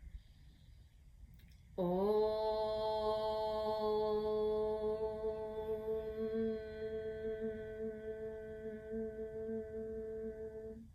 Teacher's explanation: And then the part, the ending of the Om, sounds at the lips with the lips together. And there's a little vibration there as you exhale.